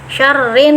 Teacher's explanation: bisa panjang dengungannya bisa di sampai 2 harokat atau lebih ya.